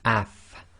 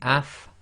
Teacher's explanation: you'll notice that your top teeth, front teeth, come together with the inner portion of your bottom lips.